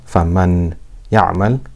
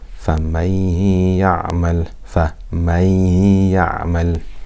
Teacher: So we have to do ghunna for two harakat.